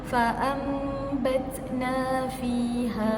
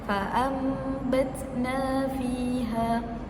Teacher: Ubahkan sebutan mim, sebutan nun kepada sebutan mim. Jadi perlu rapatkan bibir dan beserta dengung 2 harakat. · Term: hukum iqlab